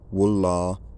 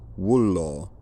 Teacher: Speakers in the red culture rounded their lips on that final vowel.